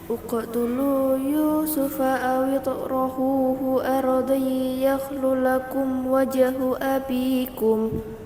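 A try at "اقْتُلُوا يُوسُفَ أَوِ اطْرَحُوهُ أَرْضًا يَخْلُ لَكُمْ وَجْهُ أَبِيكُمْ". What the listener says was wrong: Dengungnya ardai yakhlu ditambah durasinya kurang dikit. Semuanya nada turun.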